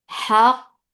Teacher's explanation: Ha from middle part of your throat. Give hams for fatha open jaws and then attach with cough.